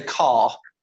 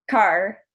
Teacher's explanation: when I say car, my tongue stays very neutral. Whereas when you say car, your tongue's probably moving back, and the tip of your tongue's probably moving up towards just behind your teeth. And that's where the standard R is located.